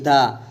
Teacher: महाप्राण भी है, घोष भी है और दंत भी है